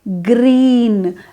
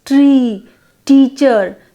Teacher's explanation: green is the high front vowel I, green, as found in the words tree, teacher